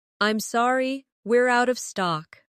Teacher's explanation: Stress out of stock to make it clear.